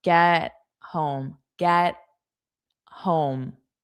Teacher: When I get home. And again, this T is a flat T. We don't push out that sound.